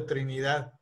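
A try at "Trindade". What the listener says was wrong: por los brasileños, no es Trinidad, sino es Trindad. I-N-D-A-D, Trindad.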